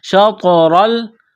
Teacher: یہاں طوا ساکن ہے طوا پر قلقلہ کریں گے. شطرل، را کو موٹا کرنا ہے زبر کی وجہ سے.